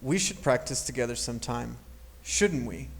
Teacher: there is no Rising intonation when you want to ask for someone else's opinion